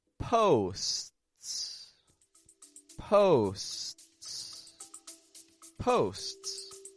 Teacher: making it long in the beginning, a quick little stop, and then releasing a second S.